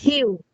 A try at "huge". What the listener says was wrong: Error. Yeah, not hue. It's huge. Huge. Listen how it's being pronounced.